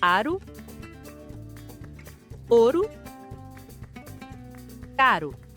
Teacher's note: O som suave do R em espanhol é praticamente o mesmo do português do Brasil. Isso acontece quando há uma única letra R entre duas vogais.